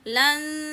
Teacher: make the sound coming from nose and mouth both together